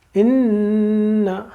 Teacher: نون مشدد ہے، دیکھیے پورا فل غنہ، زبان اوپر ٹچ کر دیجیے